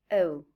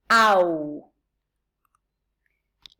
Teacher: element is pronounced with much more effort than the second element we say the first element is longer and stronger than the second element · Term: closing diphthongs